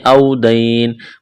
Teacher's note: واو لین ہے, یا لین ہے بغیر کھینچ کے پڑھنا ہے.